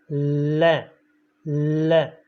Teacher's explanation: हमारी जो जीभ है वो मुंह के ऊपर वाले भाग को स्पर्श कर लेती है, नोक, जीभ की नोक, और दोनों तरफ से हवा बाहर निकलती है। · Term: पार्श्विक व्यंजन वर्ण